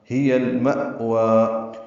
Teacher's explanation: کو المأوى کے لام سے ملا دیں گے، اظہار قمری ہوگا، ما حمزہ ساکن جھٹکے سے ادا ہوگا ، وا کھڑا زبر ہے، 2 حرکات لمبا کریں گے، وقفاً